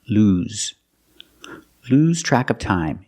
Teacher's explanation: Use the long oo sound, like food and moon, lose. And the S is pronounced with the Z sound, like zebra, lose.